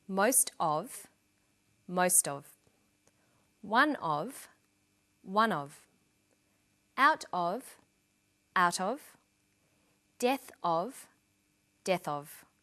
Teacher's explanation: in sentences these phrases will usually become linked together